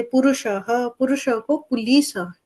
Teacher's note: र को ल के रूप में ज्यादा व्यवहार करते हैं।